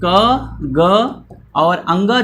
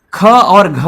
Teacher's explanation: क वर्ग में क, ग और अंग जो होगा वो हमारा अल्प प्राण में आएगा, महाप्राण में ख और घ आ जाएगा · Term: अल्प प्राण और महाप्राण